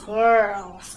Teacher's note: I roll my R's in this word as well. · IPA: ɘr